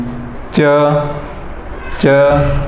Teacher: च तो आप जो देखते हैं ऊपर वाले जबड़े में तालु के वहाँ पर टकराने से च वर्ग बनता है